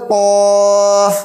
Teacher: अब ये कौफ है, जुबान की जड़ ऊपर तालू में लगाएंगे, जो हमारा कौवा होता है वहां पे लगाएंगे, ऐसे कहेंगे कौफ।